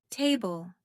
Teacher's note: Stress is on the first syllable.